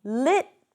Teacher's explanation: here we don't have the flap t because we drop one syllable